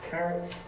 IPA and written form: ˈkærəts (carrots)